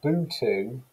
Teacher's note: We've got this baby saying boo-to for button, so That's a good example of reduplication. The oo oo sound is being repeated, and you've also got the deletion of the terminal position consonant on the end.